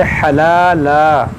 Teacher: یہاں پر دیکھیں تنوین کے بعد واو ہے تو یہاں پر ادغام کریں گے اور یہاں وقف مطلق کی علامت ہے. یہاں پر رکیں گے ہم تو اس دو زبر کو الف سے بدلیں گے, اس کو پڑھیں گے حلالا.